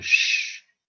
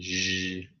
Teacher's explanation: Alveopalatal, like a sh in shin, and zh, like in vision. So that's the place of articulation, yeah, for these consonants.